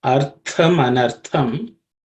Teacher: the tha which appears twice in this compound word is a aspirated consonant. That means there has to be extra air or stress placed on the pronunciation of the letter.